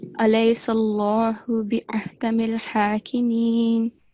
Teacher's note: you have to make a thick sound for this Allah, okay? The lam in the word Allah.